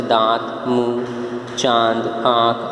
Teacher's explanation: इसका उच्चारण करते समय हवा मुख व नासिका दोनों से निकलती है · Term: अनुनासिक